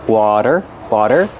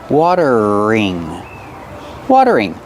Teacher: The T is a fast D.